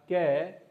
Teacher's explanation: यह हमारा क अघोष, अल्पप्राण व्यंजन है।